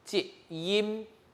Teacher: is an entry-tone character and a short sound · In the end, you must put your upper and lower lips together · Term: 入声字, 闭口音